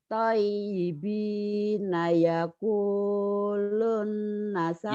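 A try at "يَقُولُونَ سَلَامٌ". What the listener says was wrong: Yaquluna. Saya shalom. Jangan shalom. Salam aja bu.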